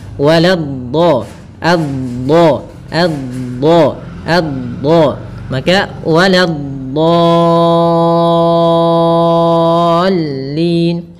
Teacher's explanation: Kemudian pada lafal dhad yang bertasydid dia memiliki sifat, salah satu sifatnya istitalah, memanjang dulu dotnya. Waladhdha, adha, maka waladhdallin.